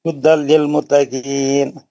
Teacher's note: नहीं हुदन नहीं है, नून की आवाज नहीं निकालनी है